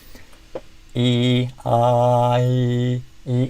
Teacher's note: for fleece or kit, you'll see that the front of your tongue is going high. So front high.